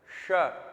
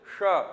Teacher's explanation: ये श तालु वाला श मतलब तालव्य श और यह वाला श यह आपका मूर्धन्य श मतलब मूर्धा वाला श उच्चारण में भी डिफरेंट है ये तालु जीभ को जीभ को से और जो ऊपर के जबड़े के बीच में से हवा निकालनी है श थोड़ा सा फोल्ड करके रखो ऐसे ऐसे कर दो श ठीक है और ये आपके मूर्धा से हवा निकाली है श बहुत पीछे से श बात आ गई समझ में बात आ आ गए मगज में।